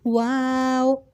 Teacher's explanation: तो हुर्फ वाव अदा हो रहा है हमारे होंठों को गोल करने से। हमने अपने होंठों को गोल करना है।